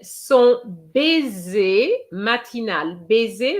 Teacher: an S between two vowels gives you a Z sound